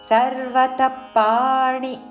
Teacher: సర్వత తర్వాత విసర్గ ఉచ్చారణ ప లాగా చేస్తూ